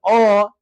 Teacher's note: अ तो आवाज आता है कंठ से, यानी अ का उच्चारण स्थान हो जाएगा मेरे प्यारे साथियों कंठ।